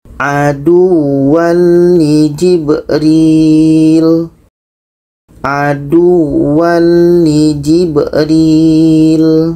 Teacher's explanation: Bermakna ro dan lam ini tidak dengung. Dan ini tanwin bertemu lam bermakna tidak dengung.